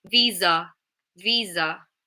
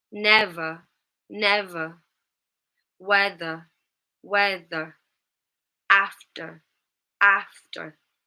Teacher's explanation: with a British accent, all of these would be a schwa at the end. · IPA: /ə/